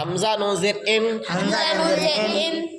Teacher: سرا زبان تالو سے مل کر نون ادا ہوتا ہے